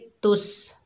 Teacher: सीन को सख्ती और सीटी से अदा करेंगे तुस। हमज़ा के ऊपर ज़बर है, लाम के ऊपर पेश है, दोनों को बगैर खींचे पढ़ेंगे तुस आलू।